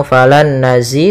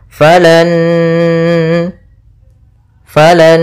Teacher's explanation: Nun yang pertama masuk kedua sambil ditahan gunahnya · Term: idgham yang disertai dengan gunah